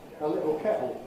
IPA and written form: ə ˈlɪʔo ˈkeʔo (a little kettle)